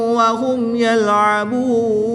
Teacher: میم ساکن کے بعد حرف با اور میم کے علاوہ حرف یا ہے تو یہاں پر اظہار شفوی ہوگا، غنہ نہیں کریں گے. وقف کی حالت میں یہاں پر مد عارض ہوگی، یعنی کہ واو مدہ کے بعد نون کے اوپر زبر ہے جو اس کو ساکن کر دیں گے تو یہاں پر وقف کی حالت میں مد عارض ہوگی، 2 سے 3 الف تک کھینچ کر پڑھیں گے.